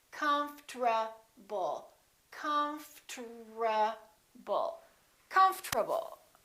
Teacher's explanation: This is what happens. The O disappears, but then there's one more very strange thing that happens, and that's the RT becomes a TR. They change positions.